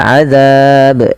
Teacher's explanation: Kemudian lafal azab, ini jangan diganti dengan azab dengan huruf zai, tapi dia huruf zal kecil yang mana makhrajnya dari ujung lidah kita menempel dengan gigi sari atas kita